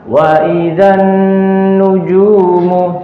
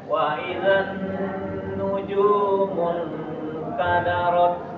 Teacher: huruf nun syaddah dhammah senantiasa diberikan apa? Gunnah, ya. 2 harakat.